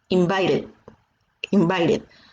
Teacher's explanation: La T pasa a sonar ahí como si fuera una R.